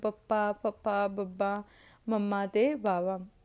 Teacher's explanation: ਬੁੱਲ ਦੋਨੇ ਆਪਸ ਵਿੱਚ ਜੁੜਦੇ ਆ ਨਾ ਜਦੋਂ ਆਪਾਂ ਬੋਲਦੇ ਹਾਂ